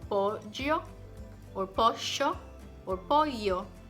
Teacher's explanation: It's not the tip of the tongue, no es la punta de la lengua, but the body of the tongue. It rises and touches the upper palate. · the body of the tongue, la lengua, rises and touch the upper palate. It's not the tip of the tongue, no es la punta de la lengua, but the body of the tongue.